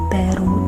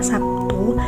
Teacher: pada kata baru diucapkan sebagai B tetapi dalam kata Sabtu diucapkan sebagai P jadi realisasi fonem b dalam pelaksanaan ujaran bisa menjadi B dan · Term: alofon